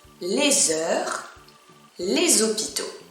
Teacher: i make a z sound right in french we call that la liaison